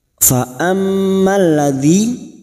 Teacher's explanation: mim yang bertasdid, gunna musaddadah, kita dengungkan selama 3 harokat.